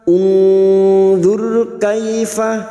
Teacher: Unzur kaifa nusarriful ayati thumma hum yasdifun. Nun sukun bertemu dha, ikhfa hakiki kita samarkan bunyi nun sukun dan mendengung selama 3 harokat.